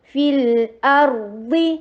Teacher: فا کے نیچے کسرہ، ای کی ساؤنڈ کر کے لام کے ساتھ ملائیے. جب بھی حرف مد، یہ حرف مد ہے نا، یا ساکنہ قبلہ مکسور ہے، تو یہ حرف مد ہے، اور اگر یہ آگے سکون کے ساتھ مل رہا ہے تو پھر یہ مد گر جائے گی.